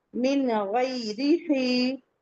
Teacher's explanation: کسرہ مستقیمہ، مد حکمی، 2 کاؤنٹ پڑھیں گے